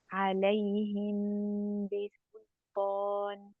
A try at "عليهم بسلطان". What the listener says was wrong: Not very close, but not quite. You're putting your lips together too much with the meme.